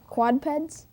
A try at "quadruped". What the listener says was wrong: Quadped? Not quadruped? Yes, that's right. We need that extra syllable in there.